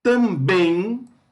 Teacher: bem é a sílaba tônica